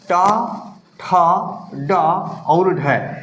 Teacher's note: किसी भी वर्ण का उच्चारण करते हैं तो हमारी अलजवाया देखो मुड़कर पीछे झटका दे रही है मुर्धा को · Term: ओज वर्ण